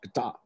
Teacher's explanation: has at best a very weak reduced vowel in the first syllable and a very prominent second syllable vowel